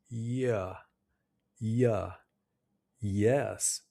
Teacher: To make the Y sound correctly, your lips should look like you're smiling, and your jaw should be relaxed. The middle of your tongue rises towards the top of your mouth, but it doesn't touch. It's a smooth gliding sound almost like a vowel. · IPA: /j/